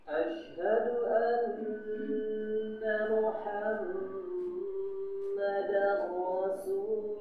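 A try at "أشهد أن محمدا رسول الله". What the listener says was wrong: Betul, sudah betul, tapi kurang dialirkan. Rasulullah, lullah, lamnya.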